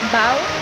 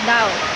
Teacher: in Mandarin the A and O are given equal prominence.